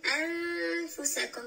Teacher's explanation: اینجا اخفا صورت میگیره و البته همراه غنه دوستای عزیز اینجا نون را مخفی میکنیم اما صفت غنه بودنش که است اینجا غنه صورت میگیره میگیم · در وقتی که انفسکم میگیم اینجا آواز از خیشوم خارج میشه